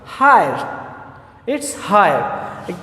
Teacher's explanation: the sound is shifting from I to schwa sound.